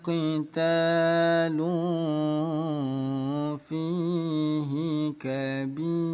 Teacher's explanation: Ya, nama hukumnya ikhfa. Nah, cara baca hukum ikhfa, bunyi dhammatain harus disamarkan